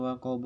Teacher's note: Kemudian di ayat 3 waqab huruf ba fathah yang diwaqafkan menjadi ba mati menjadi qalqalah kubro